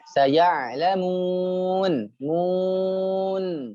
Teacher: yang ain sukunnya dia tertahan tapi mengalir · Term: Tawasud